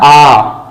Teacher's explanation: विवृत स्वर जिसमें पूर्ण रूप से मुख खुल जाए